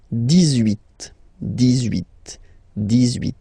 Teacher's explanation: you will make this little link between the two, the liaison